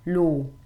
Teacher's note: bear in mind this is just one vowel sound and it's a long o sound